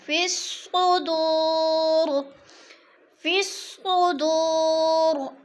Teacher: دو پہ وہ مدہ، وہ ساکن سے پہلے دال کے اوپر پیش، وہ مدہ ایک الف کے برابر کھینچ کر پڑھنا ہے